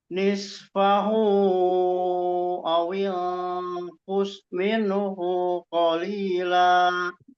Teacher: Hu-nya terkesan agak panjang, agak ada ayunan sedikit.